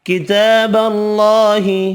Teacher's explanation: کتاب اللہ، تا کھڑا زبر ہے ایک الف کی مقدار میں کھینچ کر پڑھیں گے، اللہ کا نام والا لام زبر کی وجہ سے پر پڑھیں گے